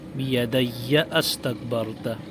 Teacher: بیدی استکبرت میں حمزہ کو نہیں گرایا جائے گا، بلکہ حمزہ پڑھا جائے گا ملاتے ہوئے